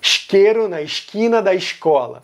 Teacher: Rio de Janeiro e Pernambuco adicionaram um chiado aí